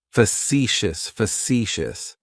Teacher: It's like you're just saying the letter C for see. That first syllable has that schwa, that sound.